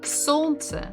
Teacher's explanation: So the stress is on the first syllable.